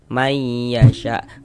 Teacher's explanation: Kemudian dighunahkan atau didengungkan sehingganya di bagian may. Nah itu suaranya itu kita tahan. Kita panjangkan sejenak kira-kira sepanjang dua harakat.